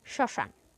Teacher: স এর উচ্চারণে কিছুটা ঝোক পড়বে এবং সামান্য নাসিক্য হবে শ্মশান আমরা চন্দ্রবিন্দু ব্যবহার করলে যেমন নাসিক্য স্বর হয় ঠিক সেরকম